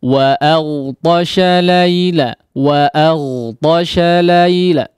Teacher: Ta juga sama ditebalkan. Huruf waw ya dimonyongkan, tapi setelah waw tersebut masuk ke harakat fathahnya, maka silahkan dibuka ya. Jangan dibiarkan di depan wo jadi bunyinya.